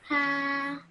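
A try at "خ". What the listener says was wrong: Okay, try again. This one looks like a ha, but it has a dot in the middle like this.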